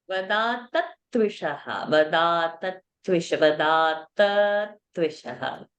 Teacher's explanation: That extra tha will come for the dvitva.